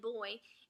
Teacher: is a bilabial sound because we've used both of our lips to pronounce this B sound.